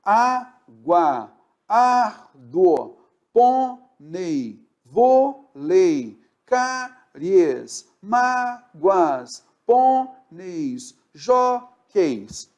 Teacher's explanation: a penúltima sílaba é tônica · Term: paroxítona